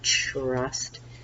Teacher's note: and then we have a short vowel in the middle remember the blend TR is tricky because it sounds like CHR